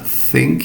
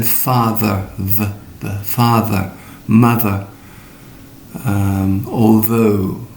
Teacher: the tip of your tongue between your teeth for the voiceless sound think and the voice sound mother father